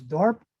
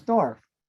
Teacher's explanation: shift with the p as well and the p was changed to a pf or an f sound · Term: consonant shift